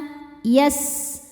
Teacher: sin-nya desis ya punya sifat shofir.